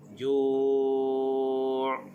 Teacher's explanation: di hujung dia pastikan ada bunyi ain.